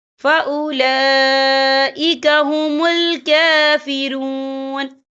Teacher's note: وَمَن لَّمْ يَحْكُم بِمَا أَنزَلَ اللَّهُ فَأُولَٰئِكَ، یہ دیکھیں فَأُولَا، لام کے پر کھڑی حرکات ہے اور اس پر مد بھی ہے. یہ مد جو ہے مد متصل ہے، اس کی مقدار 4 حرکت کے برابر ہے، تو ہم اسے 4 حرکت کے برابر کھینچ کے پڑھیں گے